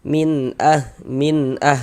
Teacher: bunyi nun sukun atau bunyi tanwinnya itu kita baca jelas. Kemudian tidak kita dengungkan, tidak kita gunakan. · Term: idhar halqi